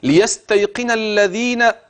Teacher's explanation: اوعى تنسى طرف اللسان في الذال